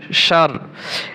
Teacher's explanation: শিন র জবর সার এখানে র পাতলা হবে র কি হবে পাতলা হবে জেরি শাররি সারি এভাবে বলা যাবে